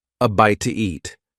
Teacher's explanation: when one word ends in a vowel sound and the next one starts with a vowel sound, we often add an extra sound to make it easier to say. In this case, the extra sound is W